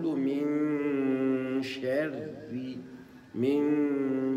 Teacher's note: دون ان يدخل تفخيم الراء في ترقيق الشين